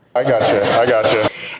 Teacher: So in fast speech, got and you often becomes gotcha. This is a classic example of a T to Y sound that results in a ch, almost like a CH. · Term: assimilation